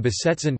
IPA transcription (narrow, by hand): bəˈzɛt͡sən